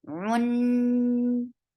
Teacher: Attach with noon. Noon will get gunna, and this is akmal gunna. Give nice time here. Run. Fatha is very short.